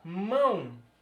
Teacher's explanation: os nasais são pronunciados pela boca e pelo nariz também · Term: ditongo nasal